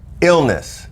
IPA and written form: ˈɪl.nəs (Illness)